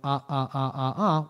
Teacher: when we say the vowel sound ah we're actually putting a little glottal stop on